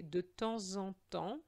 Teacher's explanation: we have to make a liaison between the S of temps and the en. So we are going to say de temps en temps, and that liaison is going to be a Z sound.